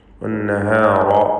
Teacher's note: വന്നഹർ എന്ന പദത്തിലെ നൂൻ മുഷദ്ദദ, ഷദ്ദുള്ള നൂനിനെ മണിക്കണം, രണ്ട് ഹറക്കത്തിൻ്റെ അളവിൽ ഉന്നത്ത് കൊടുക്കുക.